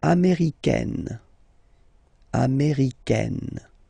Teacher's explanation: it's really open, this A-I, américaine.